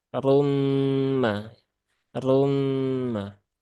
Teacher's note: di sini ada Idam bunah maka ditahan dulu ya Ee tunaikan gunahnya disempurnakan sampai tiga harakat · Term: idgham bi gunnah